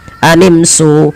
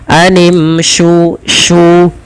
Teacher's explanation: posisi makhraj huruf shin adalah di tengah lidah kita. Sya, dan dia memiliki sifat tafasyi, intisyarus saut, ya, menyebarnya suara di dalam mulut kita.